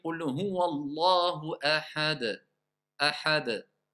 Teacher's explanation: Si je dis Qul huwa Allahu ahad, ahad, je sais que c'est un. J'ai fait une qalqala qui m'a permis de savoir de quelle lettre je parle. C'est le del.